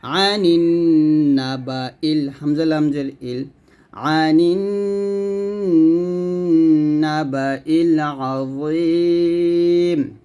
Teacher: এই যে এটা হলো ওয়াজিব গুণনা, কারণ নুনের পর তাসদিদ আসছে।